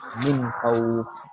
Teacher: نون ساکن کے بعد خا آ رہا ہے تو ہم لوگ نون کو بھی صاف پڑھیں گے، خا کو بھی صاف پڑھیں گے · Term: اظہار